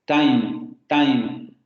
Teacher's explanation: Cuando nosotros, por ejemplo, en inglés pronunciamos time, inmediatamente se escucha nuestro acento porque estamos pronunciando con la dental